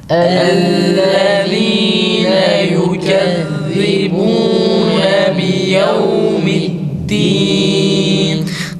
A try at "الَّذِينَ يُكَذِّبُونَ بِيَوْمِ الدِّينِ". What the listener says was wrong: Dal biraz ta şeklinde çıkıyor arkadaşlar. Yevmiddin de yevmiddin. Dalın net bir şekilde dal şeklinde çıkması gerekir. Fatiha'da da çoğu zaman insanlar o dalı ta şeklinde okurlar.